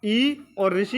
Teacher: जिसमें जीभ का आगे वाला भाग काम करता है उसे क्या कहते हैं? अग्रस्वर कहते हैं